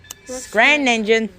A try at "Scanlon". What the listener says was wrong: There is no R.